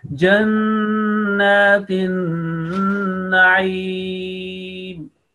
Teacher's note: You have to make nasal sound first. You have to hold nasal sound 2 seconds, and after that there is a vertical fatha for 2 seconds.